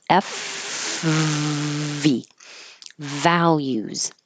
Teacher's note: top teeth on bottom lip the same exact position as F so if you have trouble finding the V make the F first and then use voicing use sound in your throat